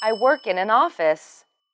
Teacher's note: the stress should be on the name of the workplace in this sentence